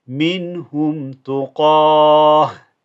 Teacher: you change that ta into a ha